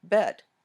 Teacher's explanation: they say best but leave out the s sound listeners might hear bet